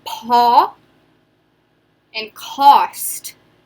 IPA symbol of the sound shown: ô